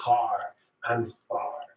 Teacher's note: in most British English accents, it's non-rhotic, so we don't use that R. But in the West Country, that R is pronounced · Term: rhotic R